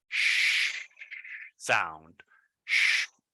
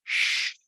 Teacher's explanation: Your tongue is like in the middle of your mouth, like making a friction with the air.